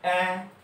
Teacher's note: এ ঠোঁটের আকৃতি চ্যাপ্টাকৃতি, এ জিহ্বার অবস্থান নিম্ন মধ্য, একেবারে নিচেও না, নিম্ন মধ্য, এবং জিহ্বার অবস্থান সামনের দিকে, সামনের দিকে কিন্তু জিহ্বা থাকে।